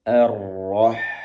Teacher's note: Kemudian H-nya pastikan keluarnya dari tenggorokan bagian tengah. Arrah sambil dialirkan nafasnya.